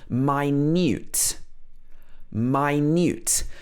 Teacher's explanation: But if this word is pronounced minute, then it means very small or very tiny. Here, the stress is on the second half of the word, so it would be minute.